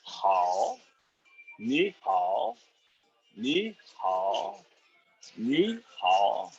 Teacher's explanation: Third tone is like a check mark. It goes down and up.